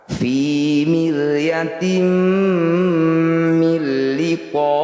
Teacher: Bunyi kasroh tanwinnya masukkan pada huruf mim, kemudian dengungkan 2 harokat. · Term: idgham bi gunnah